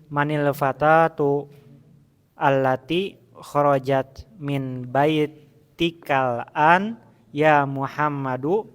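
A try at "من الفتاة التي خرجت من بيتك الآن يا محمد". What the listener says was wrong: Iya.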